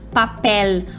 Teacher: Nunca o L no final de palavra vai ter som de U, como a gente costuma fazer em português, como por exemplo em papel.